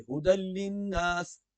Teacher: یہاں پر تنوین کے بعد لام ہے تو یہاں پر ادغام بلا ہے، یعنی غنہ اس میں نہیں ہوگا